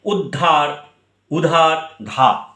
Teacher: আদিতে উ স্বরধ্বনি ছিল, সেই উটা আর নেই। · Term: আদি স্বরলোপ